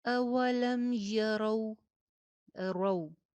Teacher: واو کے اوپر ہونٹ میکسیمم گول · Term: واو لین